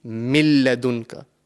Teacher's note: So, the the correct way to pronounce this word over here will be milladunka. We are completely joining the mim into the lam mushaddad.